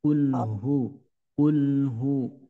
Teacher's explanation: Hu itu keluarnya dari pangkal tenggorokan kemudian ketika diucapkan ada gemaknya